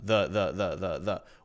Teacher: We're not putting much stress on it, just a relaxed vowel sound. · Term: schwa sound